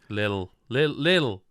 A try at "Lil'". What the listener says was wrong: No, You're adding sounds to it. Lil. You're saying like little.